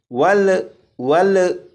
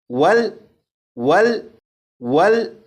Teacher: یہ لام ساکن ہے، اس لام پر قلقلہ نہیں کریں گے